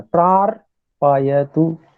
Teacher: केवल एक ही रेफ है और वो भी हलंत है, तो उसको बहुत कम समय देना है। प्रार पायतु ऐसे बोले।